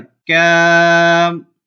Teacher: ادھر الف سے پہلے باریک کاف ہے تو یہاں پہ ہم الف کو باریک پڑھیں گے